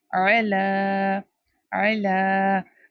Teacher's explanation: Ain comes from the middle part of the throat.